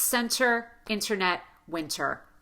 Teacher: When you have NT between vowels in a single word, pop the T as a true T.